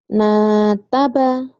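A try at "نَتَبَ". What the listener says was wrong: Jangan panjang tapi nggak boleh panjang. Nataba ini pendek semua kayak orang lagi jutek.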